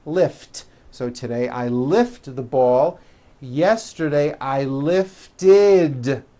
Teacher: we add the ending id which is a vowel i followed by a d which is voiced